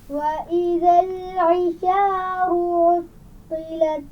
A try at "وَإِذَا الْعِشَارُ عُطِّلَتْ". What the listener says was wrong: وَإِذَا لام پر آواز کو کنٹرول کیجئے، قلقلہ نہیں ہونا چاہیے۔ وَإِذَا الْعِشَارُ پھر پڑھیے۔